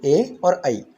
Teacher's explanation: तो आ का जो उच्चारण स्थान है वो है कंठ, और ई का उच्चारण स्थान है तालु। तो आ और ई मिलकर के ए हुआ, अर्थात जो हमारा उच्चारण स्थान है वह भी कंठ और तालु दोनों हो जाएंगे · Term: कंठ तालु वर्ण